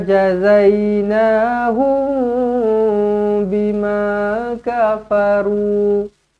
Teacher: mim kosong bertemu dengan ba Ikhfa Syafawi didengungkan dengan dua harakat